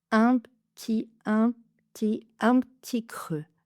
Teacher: Le P, presque pas plosif, c'est juste la fermeture des lèvres.